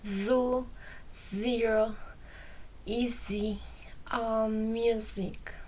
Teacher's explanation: The sound z is voiced because we use vibration in the vocal cords.